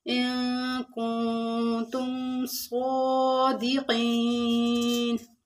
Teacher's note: کنتم میں نون ساکن کے بعد حروف اخفا کے 15 حروفوں میں سے تا ہے، تو اخفا مال غنہ ہوگا